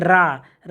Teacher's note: जिह्वा के प्रकंपन के कारण ही इसको लुंठित ध्वनि कहा जाता है।